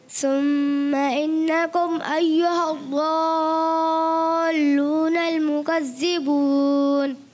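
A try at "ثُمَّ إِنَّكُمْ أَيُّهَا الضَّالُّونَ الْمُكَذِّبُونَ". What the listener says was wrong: दाल की अदायगी भी करनी है और गुन्ने भी पूरे करें।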